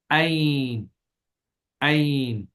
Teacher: آئین کو ادا کرتے وقت زبان کی جڑ کو حلق کی طرف مضبوطی سے دباتے ہوئے دبی ہوئی آواز میں پڑھنا ہے